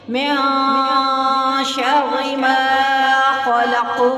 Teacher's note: ہم نون کو چھپائیں گے، نون کو اخفا کرنا، اخفا یعنی چھپا لینا، چھپا لیں گے، تھوڑا ظاہر نہیں کریں گے